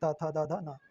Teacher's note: त वर्ग जो है वो दंत दांत की सहायता से उच्चारण करना पड़ता है। वो दंत वर्ण होता है।